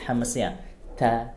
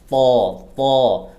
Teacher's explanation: Kalau ta ada anginnya sedikit, hamznya ta. Tapi huruf to tidak boleh, harus ditahan anginnya. To. Dan pangkal lidahnya itu ditebalkan, dinaikkan supaya tebal-tebal.